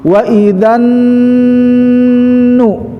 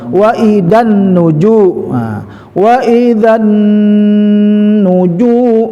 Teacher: Wa idzan masuk ya, nun ya, itu bisa alif lam samsiyah ya, masuk ke nun lewat lamnya, dan di situ ada nun yang bertasydid, maka hukumnya gunnah musyaddadah, artinya ditahan, syaddada dengung, 3 ketukan ya